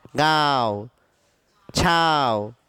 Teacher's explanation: नाक से बोलो, नाक से, मुंह से नहीं बोलना है। अनुनासिक है, नाक का उच्चारण करके बोलो। ये आपका वर्ण नाक से निकल कर आना चाहिए।